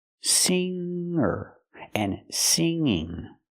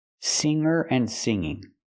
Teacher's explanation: I cannot pronounce the NG with a G sound it makes a different sound it makes a sound in your nose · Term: nasal sound